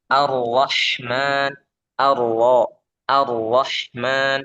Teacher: Getarannya jangan lebih dari sekali. Sifat takrirnya sekali saja.